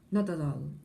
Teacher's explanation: So you are joining together the T and the other T, not at all. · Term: linking words